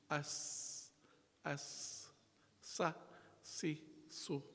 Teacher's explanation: in a sin, we see the tongue lies flat in the mouth